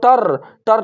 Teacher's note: ट आपका हो जाएगा मूर्धा से ही और र भी आपका हो जाएगा मूर्धा से ही